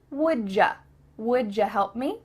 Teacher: Instead of a ch sound, like we talked about before, what cha doing? Here, instead, we are going to say ja.